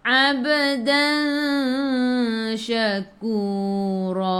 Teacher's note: Jadi ikhfa hakiki. Dengung bawa ke sisi huruf shin